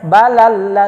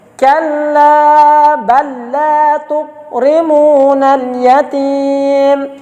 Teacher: Tetap lam langsung ke lam berikut, dimasukkan ke lam berikut. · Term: idgham mutamatsilain